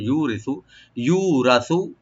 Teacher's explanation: ইউ একালেপ টানবেন, রাটাকে মোটা করে একালেপ, এখানে আমরা একটু ডিপ করে পড়বো। সাটাকে অবশ্যই রাইট দিবেন।